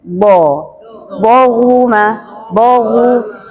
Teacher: Bibir tidak mencucuk, bo, bohuma, bohu. Kalau hu wajar karena harokat domah harus mencucu, tetapi kalau bo sudahnya fathah dia tidak boleh mencucu. Mainnya lidah dan badan lidah, bo, tidak bergerak, tidak main lidahnya, bo.